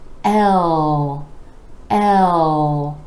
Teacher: Now our next three letters all start with the vowel sound E, as in red. L, with the E vowel sound rolling into the dark L, where the back of the tongue is coming back and down